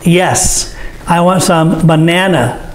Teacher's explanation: The stress is on the second syllable, bananas.